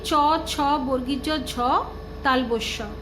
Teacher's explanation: জিহ্বার অগ্রভাগ তালুর সম্মুখ ভাগ বা শক্ত তালুতে শ্বাসবায়ু নির্গমনে বাধা দেওয়ায় তালব্য ব্যঞ্জন ধ্বনি উচ্চারিত হয়